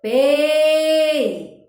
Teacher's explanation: o E, né? Maior tonicidade, então é vogal. O I, menor tonicidade, então semivogal.